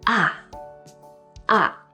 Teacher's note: And this is said in the fourth falling tone.